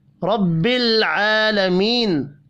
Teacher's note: را زبر کی وجہ سے پر پڑھی جائے گی، لام ساکن ہے، قلقلہ نہیں کرنا۔ کھڑی حرکت کو 1 الف کے برابر کھینچ کر پڑھیں گے۔